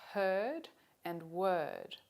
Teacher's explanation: Note again that there's no R sound in these words in Australian English in spite of the spelling · There is an open mid, that is a mid-low unrounded vowel, and the symbol for it is this one here.